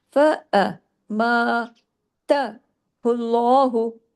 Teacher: تا کو زیادہ نہیں کھینچنا، ایک حرکت کرنا ہے